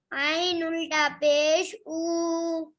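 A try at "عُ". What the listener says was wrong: आइन में जोर लगाइए थोड़ा। आइन उल्टा पेश ऊ। आवाज में भी जोर लगाइए इसके। ऊ।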